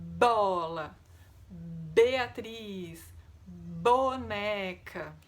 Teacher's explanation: Que ele tem que ser acompanhado pelo som da voz, não apenas o ventinho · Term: letra b, som da letra B